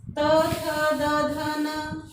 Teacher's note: जीभ दांतों से स्पर्श हो रही है, ये हो जाएंगे दंत्य।